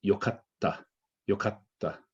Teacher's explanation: don't emphasize the k in these because you're making a double k when actually it needs to be a double t